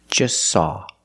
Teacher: the t is between consonants so don't pronounce it it's silent just saw you link the S with the S